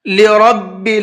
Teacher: را کو پر کر کے منہ بھر کے پڑھیں گے